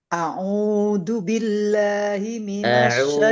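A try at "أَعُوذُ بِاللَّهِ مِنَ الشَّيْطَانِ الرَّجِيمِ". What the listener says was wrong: Bukan du enggak perlu ditiup du.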